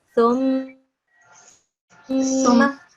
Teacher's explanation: try and keep that mim mushaddad in your mouth for 2 seconds